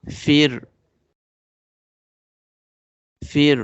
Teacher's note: Ra sound will be light because it's coming after kasra.